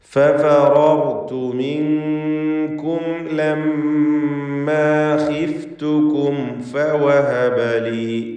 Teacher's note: ഫഫറർതു മിൻകും ലമ്മാ ഖിഫ്തുകും ഫവഹബലി എന്ന് മീമിനെ ഇൽഹാർ ചെയ്ത് വ്യക്തമാക്കി ഓതുക. ലമ്മ എന്ന് പറയുമ്പോൾ മീം മുഷദ്ദദ, ഷദ്ദുള്ള മീമിനെ മണിക്കുക.